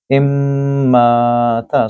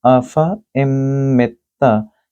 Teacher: So this will be afa immata. So this meme has shad on the top, so you have to do ghunna as well